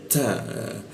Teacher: ta itu agak bocor halus